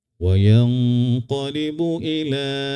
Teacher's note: ini namanya mad jaiz munfasil ya. Dibaca empat harakat.